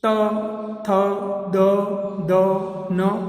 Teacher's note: જેનું ઉચ્ચારણ દાંતને અડીને થતું હોય એને દંત્ય કહેવાય